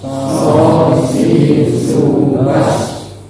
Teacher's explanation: kalau sod itu isti'la di atas. Jadi lidahnya di atas diangkat.